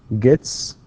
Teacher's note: the t is considered voiceless meaning that the vocal cords uh do not uh vibrate right and S okay also is pronounced is voiceless I mean